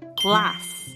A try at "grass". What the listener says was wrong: Grass. Grass. À đây là glass. Grass. G-L-A-S-S. Còn đây là G-R-A-S-S. Glass.